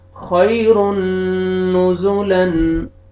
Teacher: تنوین کے بعد حروف یرملون میں سے نون آ رہے ہیں، تو یہاں پہ آپ نے غنہ ادغام کرنا ہے غنہ کے ساتھ